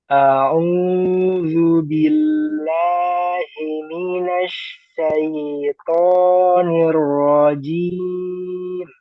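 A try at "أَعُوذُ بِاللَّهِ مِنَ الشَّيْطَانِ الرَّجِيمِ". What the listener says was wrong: Coba agak lama. Nirrojim, nirrojim, nirrojim. Coba ikuti. Nirrojim.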